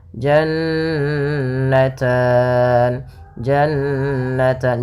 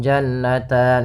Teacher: bacaan gunah yaitu suara nunnya ditahan dua harakat · ada nun berharakat tasydid, maka ini kita namakan dengan gunnah, bacaan gunnah, yaitu suara nunnya ditahan 2 harakat. Jannatan, jannatan, jangan langsung jannatan, sering terjadi tidak menahan gunnahnya.